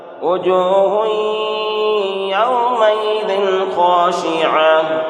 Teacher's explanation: وجوہ یہاں پر ادغام ناقص، دو پیش تنوین کے بعد حروف یؤمن میں سے یا واو میم نون میں سے یا ہے، اس لیے یہاں پر ادغام ناقص ہوگا۔ اس لیے دو پیش تنوین کی آواز کو ناک میں لے جا کر غنہ کے ساتھ پڑھیں گے